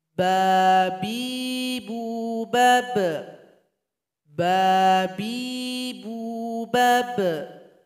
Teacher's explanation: sebelum membaca huruf ba suara kita tertahan dulu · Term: syiddah